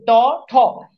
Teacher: মাঝখান থেকে উচ্চারিত হয়। ট দেখেন জভা একেবারে মাঝখানে লাগে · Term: মূর্ধা ধ্বনি